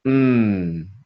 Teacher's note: mmm sound vibrating in the nose and the head